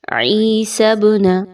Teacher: با حروف قلقلہ میں سے ہے، اسی وجہ سے اس کو تھوڑا سا ہلا کر پڑھا جا رہا ہے